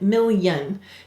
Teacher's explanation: it's saying it's consonant sound so million is two syllables and in this word the yes sound is actually a consonant